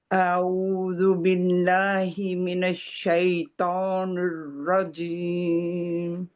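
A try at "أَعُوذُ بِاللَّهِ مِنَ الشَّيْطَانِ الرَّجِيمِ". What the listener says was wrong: चलो अच्छा बेहतर, लेकिन आपने यहाँ पे जल्दी कर दी। यहाँ पे क्या तस्दीद है ना, तस्दीद। तस्दीद नहीं नहीं, औज़ बिल्लाहि, बिल्लाहि।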